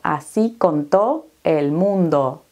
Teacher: Estamos eliminando la S aquí, estamos aspirando las vocales y la E y la L prácticamente no se pronuncian